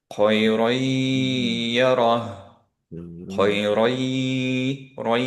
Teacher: ইয়া আপনার দুইবার পড়তে হচ্ছে। ফার্স্টেরটা উইথ গুন্না, সেকেন্ডটা উইদাউট গুন্না · যেহেতু এটা ইনকমপ্লিট ইদগাম, এর জন্য ইয়ার উপরে সাদ্দা নাই। কিন্তু আমরা এই ইয়াটাকে দুইবার পড়ছি, কারণ এখানের নুনটা এর সাথে মার্জ হয়ে গেছে, অ্যান্ড নুনটা ক্যারি ওভার করেছে এর গুন্না, এর জন্য আমরা ইয়ার গুন্না দিয়ে পড়বো।